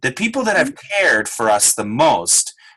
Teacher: let's do cared stretch stretch the vowel